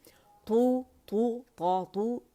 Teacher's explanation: जब दम्मा अदा होता है तो हम ज़बान की जड़ क्योंकि ऊपर उठती है, रेज़ होती है, तो हमने रेज़ करनी है और आवाज़ को गोल करना है और होंठों से शो करना है, ठीक है। · फ्रंट में हम पुश करेंगे दोनों होंठों को फॉरवर्ड, आऊ में जैसे किया जाता है